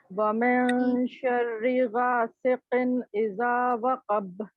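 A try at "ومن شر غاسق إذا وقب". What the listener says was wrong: غا کو لمبا کرنا ہے, غاسقن.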